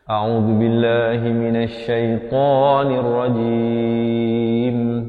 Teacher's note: Okey, kita mulakan dengan bacaan isti'azah. Pastikan hamzahnya itu makhrajnya di pangkal kerongkong, ain di pertengahan kerongkong, dua harakat, zal baris dhammah, zu di hujung lidah. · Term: dibaca nipis